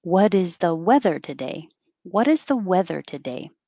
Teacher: it'll start high and go low · what is the weather and with emphasis on weather because that's the what is about what is the weather today